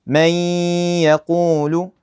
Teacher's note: So, notice the noon is basically gone. I just merge it right into the ya.